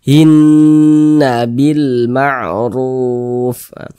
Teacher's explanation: Nah, maka cara bacanya digunnahkan tuh ya didengungkan. Nah, jadi suaranya kita tahan, kita panjangkan sejenak. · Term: gunnah musyaddadah